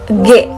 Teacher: konsoid G merupakan konsoid bersuara, yaitu konsoid yang dihasilkan bila pita suara dalam kondisi bergetar. G. Nah, sebelum keluarnya huruf G itu pasti pita suara kita tuh bergetar terlebih dahulu.